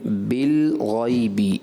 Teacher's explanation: بالغیبی میں لام ساکن کو کلکلا نہیں کرنا.